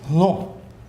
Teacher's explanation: these sounds all merged into hl, pre-aspirated L, voiced pre-aspirated L, hl.